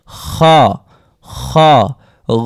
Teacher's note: খ মোটা থাকবে কণ্ঠ খ উচ্চারণ করার সময় কিন্তু মৃদুভাবে আওয়াজ হবে